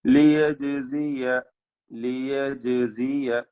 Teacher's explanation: ജീമിന്റെ സുക്കൂൻ ഖൽഖല സുഗ്റ നൽകി ശബ്ദം ചലിപ്പിക്കുക. ജീമ് ശേഷം സായിന്റെ ഉച്ചാരണം ശരിയായ വിധത്തിൽ നൽകണം.